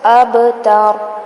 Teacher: با پہ کلکلا کریں گے، ہلائیں گے اس کو